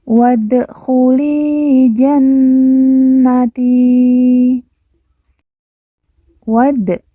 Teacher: wa langsung masuk huruf Dal Alif tidak dibaca